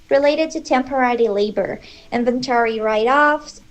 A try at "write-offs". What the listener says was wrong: Write-offs, stress the right, not the offs.